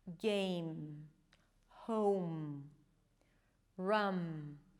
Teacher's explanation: you close your lips and you release air through the nose. The lips have to touch each other.